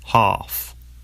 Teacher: ah in uk english normally becomes an a sound in american english